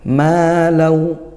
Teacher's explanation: Ma fathah diikuti Alif panjangnya satu Alif ya dua atau dua harakat yaitu Mad thobii hukumnya ma wa lawa nah ini hukumnya idgham